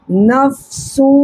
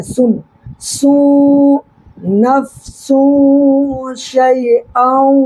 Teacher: دیکھیں یہاں پر بھی دو پیش کی تنوین کے بعد حروف اخفا کے 15 حرفوں میں سے بڑی شین آ رہا ہے، لہٰذا یہاں پر نون کی آواز کو ناک میں چھپانا ہے